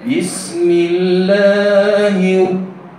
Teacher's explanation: Idgham secara sempurna. Maksud idgham tadi, hilang alif dan lam itu dari penyebutan dan masuk ke dalam ra dan bunyi ra. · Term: idgham samsiah